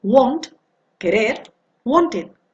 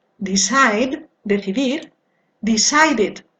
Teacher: Tenemos que distinguir los que terminan con el sonido D o T en la forma base y por otro lado los que terminan en una vocal o una consonante que no sea T o D. En los primeros tenemos que añadir una sílaba al pronunciar el pasado y esta sílaba es id.